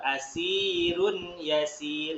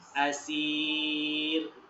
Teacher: Harokatnya 2 harokat atau 2 ketukan ketika lanjut bacanya. Kalau ketika berhenti 4 ketukan, 4 harokat. Contoh, kita contohkan yang wasol, yang lanjut.